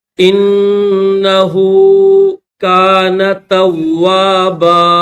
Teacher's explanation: ہا الٹا پیش ہو ایک الف کے لمٹ میں کھینچا جائے گا.